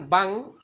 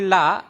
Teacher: বাং যখন বললাম তার শেষ ধ্বনিটা হলো ব্যঞ্জন ধ্বনি, শেষে যখন ব্যঞ্জন ধ্বনি থাকে তখন সেটা বদ্ধাক্ষর হয়ে যায়। আর লা যখন বললাম তার শেষ ধ্বনিটা হলো স্বরধ্বনি, স্বরধ্বনি থাকার কারণে এটা হয়ে যায় মুক্তাক্ষর।